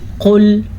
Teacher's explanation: قاف کو موٹا پڑھنا ہے، یہ موٹا قاف ہے